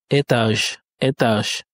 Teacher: Donc la lettre G étant une consonne sonore, en marquant l'arrêt, il va se prononcer ch. Le ch qui est une consonne soure. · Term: assaoudissement en fin de mot